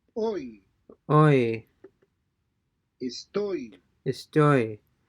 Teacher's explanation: So O and Y are being combined to form a single sound. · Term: OI diphthong